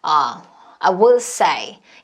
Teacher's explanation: 원래 will은 기능어지만 굉장히 강조해서 했어요.